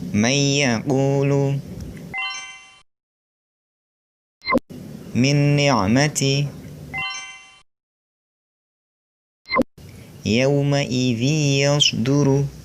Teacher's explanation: Yang pertama, idgham bi gunnah, yaitu meleburkan nun mati atau tanwin disertai dengan dengung. Huruf idgham bi gunnah ada 4, yaitu Wawu, mim, ya, dan nun.